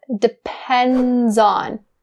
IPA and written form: dɪ-ˈpend-zɑːn (depends on)